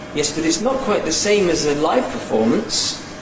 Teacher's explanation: Now here we have a sliding head before a fall-rise nuclear tone, a fairly usual combination for a fall-rise. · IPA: jes bət ɪts ↘nɒk kwaɪt ðə ↘seɪm əz ə ˅laɪv pəₒfɔːməns